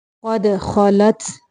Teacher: دال کو کلکلا کرنا ہے، قاف کو موٹا پڑیں گے